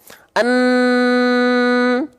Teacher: akan sengau suaranya akan sengau tahu sengau teman-teman nah dia akan suaranya akan masuk ke rongga hidung dan suaranya akan sengau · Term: dengung